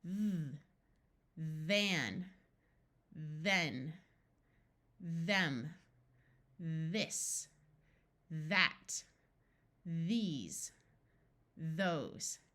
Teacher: the words that you use to point to things, this, that, these, and those, all use the voiced sound of th.